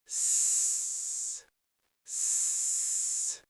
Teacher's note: put your tongue tip close to the ridge behind your top teeth, but don't touch it. Leave a tiny gap and push air through. It should sound sharp and clear, like a snake.